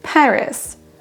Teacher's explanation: C'est vraiment la première syllabe qui est accentuée